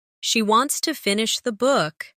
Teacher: Stress wants and book, and let to finish the be soft and fast.